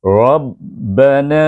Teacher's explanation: huruf ra itu hujung Lidah Tidak mencecah tidak mencecah gusi itu dia berhadapan dan dia bergetar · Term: takrir